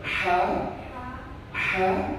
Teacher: dia kalau mengucapkan huruf ha itu terasa seperti bunyi kepedasan